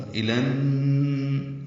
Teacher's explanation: الا میں لام پر کھڑا زبر تھا لیکن ان نجاہ کا حمزہ عارضی ہونے کی وجہ سے لام نون سے ملا دیا گیا. الف لام نہیں پڑھیں گے، ادغام شمسی ہوگا. الن اور غنہ بھی ہے ساتھ، تو ادغام شمسی مع الغنہ.